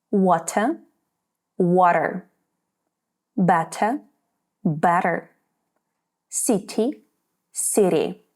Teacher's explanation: The T between vowels sounds more like a soft D. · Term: flap T